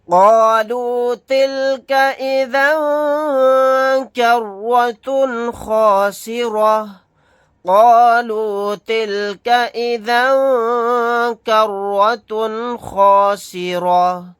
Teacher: تا کے اوپر تنوین ہے، تنوین کے بعد خا آ گیا، یہاں پر اظہار کا قاعدہ ہوگا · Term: اخفا